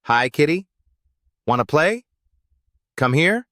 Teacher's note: Use rising intonation for questions and greetings. When you want to engage your cat, end your phrase with a rising pitch.